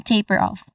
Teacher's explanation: We start with a short O vowel sound and then letter F sound or the f sound. All in all, this is taper off, stressed on the first syllable.